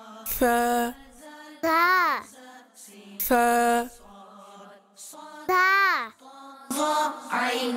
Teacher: আরবিতে সা এর উচ্চারণের পদ্ধতি হচ্ছে জিহ্বার অগ্রভাগ উপরের দাঁতের ভিতরগত কিনারা হতে উচ্চারণ হয়।